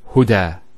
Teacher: There's the elongation as well because the fatha followed by an alif. If this wasn't there, it will be huda, but huda with the alif.